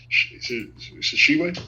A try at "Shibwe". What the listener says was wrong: Shibwe, just Shibwe. There's no like tuh. Shibwe, yeah, just Shibwe. It just started with sh.